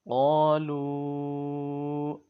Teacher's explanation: قوف کو لمبا کرنا ہے 1 الف کے برابر اور موٹا بھی پڑھنا ہے